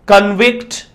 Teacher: so verb stress will be on the second syllable